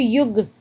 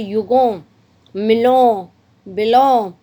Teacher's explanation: युगों में आप ध्यान से थोड़ा सा रियलाइज करो तो नाक से स्वर निकलता है। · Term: अनुस्वार